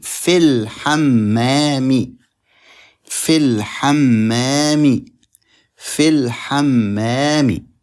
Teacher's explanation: Fi, stretching ya, followed by al. We skip the stretching ya and we skip the alif, and we jump from the fa to the lam, and we say fil hammami, fil hammami, fil hammami.